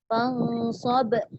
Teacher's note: Dia kena potongkan dia, lantunkan dan hentikan. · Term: qalqalah kubra